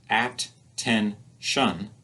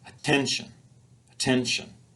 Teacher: It's our middle syllable that receives the most stress. The other syllables are weaker, they're unstressed, so they don't get spoken as loudly or with as high a pitch, and they're spoken more quickly.